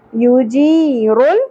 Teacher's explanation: یا ساکن سے پہلے زیر حرف مدہ ہے، ایک الف کے برابر کھینچیں گے